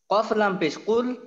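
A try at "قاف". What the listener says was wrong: ভাই, এটা কিন্তু কাফ। যেখানে এটা কিন্তু কাফ, কফ না। কাফ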